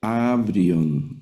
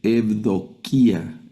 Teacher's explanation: Esta ypsilon adquiere valor de consonante y entonces se va a pronunciar como una V. Y va a ser como ab, por ejemplo, el primer diptongo ab y el segundo diptongo lo vamos a pronunciar como ev. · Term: diptongo alfa, ypsilon